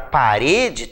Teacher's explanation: Então nós sabemos que a palavra parede, por exemplo, tem um acento tônico no rê